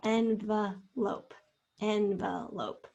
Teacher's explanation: you hear the schwa in the second syllable